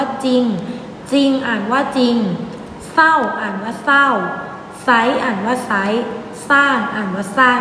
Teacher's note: แต่เวลาอ่านเราจะอ่านไม่ออกเสียงรเรือ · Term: อักษรควบไม่แท้